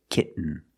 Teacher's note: When you have T-E-N, T-O-N, or T-A-I-N at the end of the word, and the syllable is not stressed, the T makes a different sound. We have to make a stop T and link it to the N.